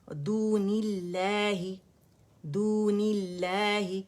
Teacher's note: لام جلالہ سے پہلے کسرہ آ رہی ہے تو پھر باریکی میں روانی میں پڑھا جائے گا